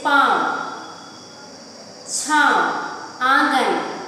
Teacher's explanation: जब हम अनुनासिक चिन्ह वाले शब्दों को पढ़ते हैं तो जो अंदर से गले से जो हवा निकलती है वो वायु निकलती है वो नाक और मुख दोनों से बाहर निकलती है